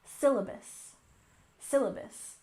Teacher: syllabus with emphasis on the first syllable